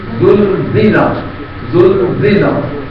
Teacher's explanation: اذا میں زال پر سٹی نہیں ہوگی اور زلزلہ میں زا پر سٹی ہوگی دونوں جگہ پر